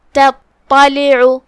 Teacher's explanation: لیکن فرق اتنا ہے کہ تا حروف الترقیق میں سے ہے اور طا حروف التفخیم میں سے ہے. مطلب ہم تا کو ہلکی آواز میں پڑھیں گے اور طا کو موٹی آواز میں. جو کہ طا پہ تشدید ہے تو ہمیں 2 حرف کے برابر طا کو ادا کرنا ہے.